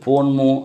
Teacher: வரக்கூடிய மகரங்கள் தன்னுடைய அரை மாத்திரையிலிருந்து குறைந்து கால் மாத்திரையாக ஒலிக்கும் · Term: மகர குறுக்கம்